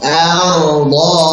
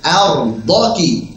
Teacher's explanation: untuk kesalahannya adalah pada huruf do-nya. Jangan dipanjangkan ya. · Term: disambung